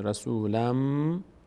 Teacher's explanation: بعد از تنوین میم یکی از حروفی ادغام میشه به جای نون میم تلفظ میشه